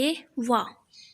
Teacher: इसका उच्चारण जो है दांत और होठ से होता है, इसलिए इसको दंत्योष्ठ्य बोलते हैं।